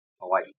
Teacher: There's like a pause between the first I and the second I.